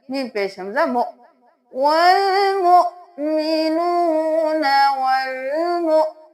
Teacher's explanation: واو کے اوپر نہیں حمزہ کے اوپر جزم ہے تو ہم جھٹکا دیں گے